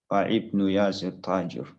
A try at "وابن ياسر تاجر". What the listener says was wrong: Wabnu. This is Hamzatul Wasl, we don't pronounce. Wabnu. Wabnu Talibin.